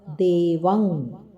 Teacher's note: ಇಲ್ಲಿ ಅನುಸ್ವಾರ ಕ ವರ್ಗದ ಅನುನಾಸಿಕವಾದ ಂಗ